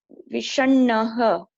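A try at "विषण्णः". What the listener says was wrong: Vishannaha it is. V plus Sha plus Nakara plus Nakara. Vishan. Naha. Vishannaha.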